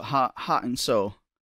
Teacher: She doesn't pronounce the T's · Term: glottal T